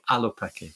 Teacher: You've got to start with a glottal stop